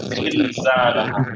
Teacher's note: এই যে জিলজাল জুলজিলা বলতে যে ভাইব্রেশন ক্রিয়েট হয়, ইস জেড।